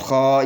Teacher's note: بتی خا زبر الف خا، یہ الف سے پہلے زبر ہے، تو اس الف کو 2 حرکت کے برابر کھینچ کر پڑھیں گے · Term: الف مدیہ